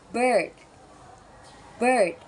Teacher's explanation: this sound is produced with a slightly open mouth and the tongue in a central position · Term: uh sound